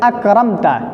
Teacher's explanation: میم کو اپنے مخرج سے بلا غنہ ظاہر کر کے پڑھیں گے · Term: اظہار شفوی